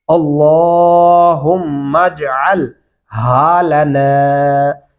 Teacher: لام کے اوپر کھڑی زبر ہے، آواز کو لمبا کریں گے